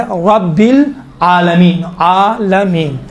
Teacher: तो अब यहाँ पर भी अल्हम्दु अल्हम्दु लिल्लाहि रब्बिल आलमीन, रब रा पर गुफ्तगु है, रब रा को चूंकि ज़बर है मोटा तलफ़ुज़ किया जाता है